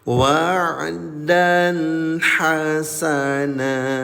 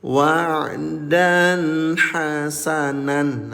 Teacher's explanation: Nah, perhatikan baik-baik, Ayah dan Ibu, jika kalian berhenti di fathah tanween atau garis ganda di atas, ini berlaku khusus untuk garis ganda di atas. Bunyi tanween diubah menjadi panjang dua harakat. Namanya Mad.